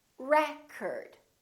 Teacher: if it's a noun, it's pronounced as record. The first syllable is stressed. Record. This O changes.